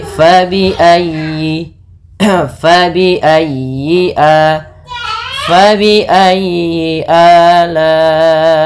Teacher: Fa, hati-hati jangan dibaca dengan pa. Kemudian dalam ayyi ditekan huruf ya-nya karena dia tasdid, dan huruf ya termasuk huruf lin yang lembut, di dalam pelafalannya jangan dihentakkan